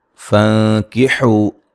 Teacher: یہاں نون ساکن کا باریک اخفا ہے. حو و مدہ ہے.